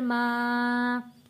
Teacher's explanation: یہاں پر مد ہے 3 الف کے برابر، اس کو ہم نے کھینچ کر پڑھنا ہے